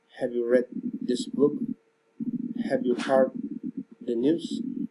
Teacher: General question, rising intonation.